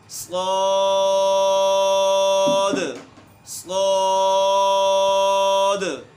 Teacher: अच्छा, साद, ये है इसका असल मखरज। आखिर में दाल है, इसको क़लक़ला करना है, साकिन है, इसको हमने हल्का सा हरकत देनी है।